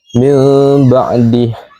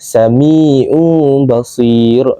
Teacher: nun mati ataupun tanwin ditukar kepada bunyi mim dengan dengung, iaitu gunnah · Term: iqlab